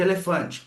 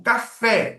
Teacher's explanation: Ó, o e e de elefante é um e fechado. O café, o e do café é o e aberto, uma vogal aberta.